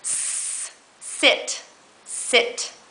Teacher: you're just going to breathe out and your tongue is tense and low